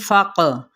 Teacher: یعدکم الفقر، ٹھیک ہے، ان حرکات کو لمبا نہیں کریں گے. فق، قاف پہ قلقلہ کریں گے